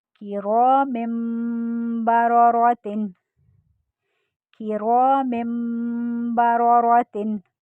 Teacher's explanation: अब देखें, यहाँ पर आपका अलिफ से पहले रॉ पर ज़बर आ गया। रॉ को मोटा भी पढ़ना है ज़बर की सूरत में, और अलिफ से पहले रॉ पर ज़बर एक अलिफ का टाइम देंगे।